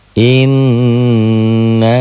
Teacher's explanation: In gunnah double ditahan dengung.